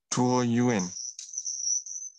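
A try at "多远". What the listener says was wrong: Yeah, improve your tuo as well. This is tuo, no air at all. No air.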